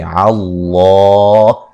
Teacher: لفظ اللہ کو موٹا ادا کریں گے، اس سے پہلے حرف پر زبر ہے. وقفاً بڑی مد کے ساتھ پڑھ سکتے ہیں.